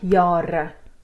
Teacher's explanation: because it's on an open syllable, you also have a long A, although it's only one A, not two.